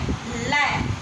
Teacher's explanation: वायु है वो जीवा के दोनों बगलों से निकलती है। ल, जीभ घूम जाती है ऊपर की तरफ, और जो हवा है वो दोनों साइडों से निकलती है, जिसको पार्श्विक बगलों से निकलती है हवा।